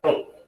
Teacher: E nós não temos esse som na língua portuguesa, mas em outras línguas, como por exemplo em inglês. É um som de T aspirado, aquele T que você faz com a língua entre os dentes.